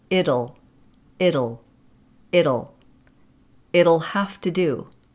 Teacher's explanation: the final T in it will actually be pronounced as the flap D, it'll. Excuse me, it'll, it'll, it'll.